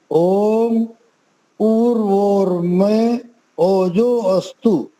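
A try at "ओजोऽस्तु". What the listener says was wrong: फिर आपने अस्तु बोला। अस्तु नहीं बोलना ओजोस्तु, ओजोस्तु, ठीक है?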